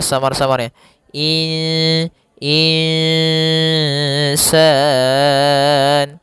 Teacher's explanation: nun sukun bertemu dengan huruf sin maka kita namakan dengan bacaan ikhfa. Yaitu secara membacanya itu nunnya kita samarkan kepada huruf sin. Kemudian terdengar suara samar-samarnya in insan insan.